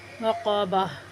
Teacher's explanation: گول تا وقف کی صورت میں ہائے ساکنہ سے بدل جاتی ہے۔ وقابہ، ٹھیک ہے۔